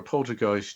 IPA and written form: ˈpoʊltərˌɡaɪst (poltergeist)